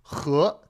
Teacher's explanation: The Chinese H is a bit stronger, comes a bit more from the back of the throat, and it's got that chutzpah or loch, like they would say in Scotland, right?